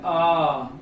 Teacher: विव्रत स्वर में क्या है आ, मतलब कि पूरा मुख खुल जाए